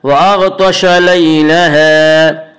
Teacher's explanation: غین کو پر پڑھیں گے اور طوا کو بھی پر پڑھیں گے۔ غین اور طوا دونوں حروف مستعلیہ میں سے، حروف مستعلیہ 7 ہیں جن کا مجموعہ خصہ ضغط نقض ہے جو ہمیشہ ہر حال میں پر پڑے جاتے ہیں۔